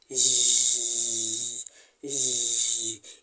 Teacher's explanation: It is a voiced post-alveolar fricative, and it is represented by words like usual, beige, measure, television.